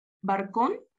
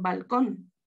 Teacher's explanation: El canario, confusión de R y L, por ejemplo, barcón por balcón.